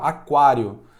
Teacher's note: Aqui nós temos um ditongo crescente porque temos uma semivogal ao lado de uma vogal Ou seja é crescente começou fraco como e ficou forte mas · nós temos o U, que é uma semivogal, e temos o A, que é uma vogal. Galera, o A ele sempre vai ser vogal, tá?